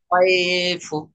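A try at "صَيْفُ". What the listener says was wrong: সয়ফু নরম আওয়াজে তাড়াতাড়ি পড়তে হবে, সয়ফু। সই বলে একটু টান হয়ে যাচ্ছে, টান দেবেন না, সয়ফু।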